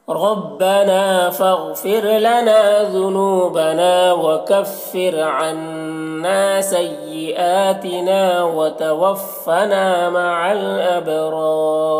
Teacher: وتوفنا میں بھی الف مدہ ہے۔ مع الابرار با میں قلقلہ ہوگا اور یہ دونوں را کو پر پڑھیں گے اور یہاں پر بھی وقف کریں گے تو مد عارض وقفی ہوگا۔